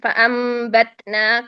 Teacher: تا میں شدت ہے، سا میں رخوت ہے، اگر تا میں شدت ادا نہ کی جائے تو وہ سا کی طرف چلا جائے گا